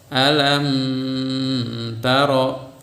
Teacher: Mim matinya jelas, kemudian huruf ikhfanya pun jelas. Nah, ketika dibaca beri kadar gunah yang natural. Jadi tidak ada tambahan kadar gunah. Ada gunahnya namun tidak ada tambahan. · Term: idhar syafawi